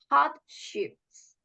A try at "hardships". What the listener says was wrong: Yes, hardships, not handships.